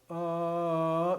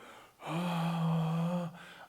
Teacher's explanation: my throat's tight and i'm not flowing the air freely if i go ah i'm flowing the air freely but my